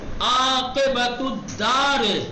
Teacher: یہاں چونکہ الدار پہ جو الف ہے حمزہ وصل لیکن بیچ میں آیا ہے، اور بیچ کا قانون کیا ہے؟ نہیں پڑھا جائے گا۔